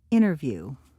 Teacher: T is held before N, unstressed and followed by TEN or TAIN, written. T is swallowed by N